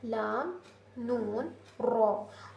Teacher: जुबान की नोक ऊपर के दांत के पिछले वाले हिस्से में लगकर अदा होता है।